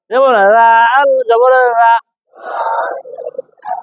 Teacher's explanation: রাল জিহ্বার আগা থেকে নরম ভাবে